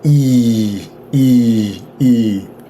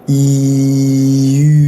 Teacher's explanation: If I put my tongue up high and I open my lips, it's going to sound like E, E, E. If I make this exact same mouth movement, keep my tongue in the same place, but I make my lips a round circle shape, it's going to sound like E.